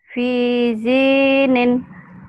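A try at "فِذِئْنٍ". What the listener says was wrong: Kok gitu sih bacanya? D-nya. Lagi.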